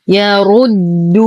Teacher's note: نفخم الراء مع إتمام الضم. نتم ضمة الدال بعدها واو ساكنة فهو مد طبيعي بمقدار حركتين.